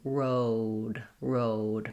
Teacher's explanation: making sure you have a nice round lips and that you're sliding and closing as you go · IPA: /oʊ/